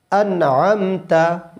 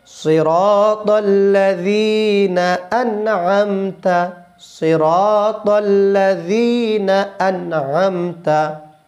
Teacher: আইনটা জানি আমরা কণ্ঠনালীর মধ্যে যে উঁচু জায়গাতে আছে এখান থেকে বলতে হবে